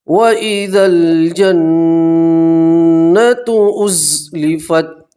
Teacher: ٹھیک ہے، وَإِذَا الْجَنَّةُ لیکن نون کے اوپر تشدید آپ نون میں گننا کریں گے. نون کی آواز کو آپ ناک کے اندر 2 سیکنڈ کے لیے روکے رکھیں گے